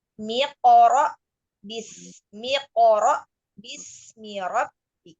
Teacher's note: menghilangkan hamzah wasol dari ayat iqra. Hamzah wasolnya hilang.